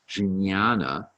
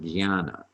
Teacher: when that n comes after a j the j is also transformed into more of a g sound